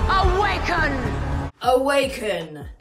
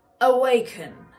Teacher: you heard that bit of an aspiration, that sort of an H breathy sound on the K, and it gives it this awaken.